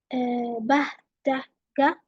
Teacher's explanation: bah, da, ga are voiced because there is vibration in my vocal cords